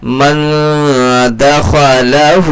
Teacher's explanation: اب یہاں دیکھیے من دخلہ، نون ساکن کے بعد دال آ رہا ہے، نون کی آواز کو کیا کرنا ہے، ناک میں چھپا کر کے پڑھنا ہے، کیونکہ یہاں پر اخفا ہوگا